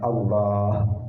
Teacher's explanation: Jadi lamnya tetap Allah, tetap ada lamnya di situ. Nah, bukan wawu tetapi lam yang dibaca tebal, lam yang dibaca tafkhim.